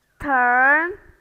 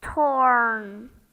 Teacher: the first one ER the mouth is relaxed second one or the mouth is rounded